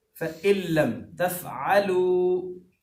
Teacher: تفعلوا کہ اینڈ پر جو واو ساکن ہے اس کو 1 سیکنڈ لمبا کرنا چاہیے